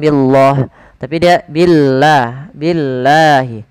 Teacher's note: lafal Allah kita panjangkan sepanjang dua harakat